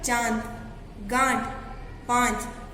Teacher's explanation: जिन वर्णों के उच्चारण में हवा मुंह और नाक दोनों से निकलती है वह क्या होते हैं? अनुनासिक।